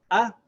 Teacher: the throat completely closes so that the air is stopped from coming out and then you make the sound when you open the throat